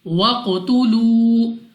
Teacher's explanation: جب ہم قاف کو پڑھیں گے ادا کریں گے تو ہمیں اپنی آواز واپس لوٹتی ہوئی سنائی دے گی. وَقْتُلُوا اس کے بعد ہے واو مدہ, کیونکہ واو ساکن سے پہلے پیش ہے تو واو مدہ ہے, 2 سیکنڈ تک کھینچ کر پڑھنا ہے.